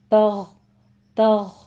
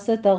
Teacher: وس یہاں پہ سین میں ہمس ہوگا، سیٹی کے آواز کے ساتھ پڑھیں گے، وس تغ تغ غین کو پر کر دیں گے، قلقلہ نہیں کرنا دونوں کے پر، وس تغو نہیں کہنا، سٹاپ کریں گے۔